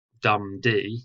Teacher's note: so the first syllable is stressed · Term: trochaic